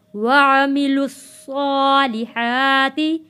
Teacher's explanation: عین کو کھینچنا نہیں ہے، یہاں اپنے خیال رکھنا ہے۔